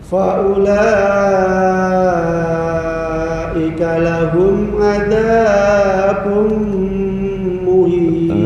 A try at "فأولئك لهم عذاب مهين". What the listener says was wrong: Za kepanjangan, dua harokat aja, jangan lebih. Adzabum.